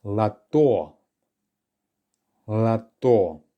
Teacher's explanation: It's the second one that's stressed, so the first one is unstressed. So we perform a reduction on the first letter O.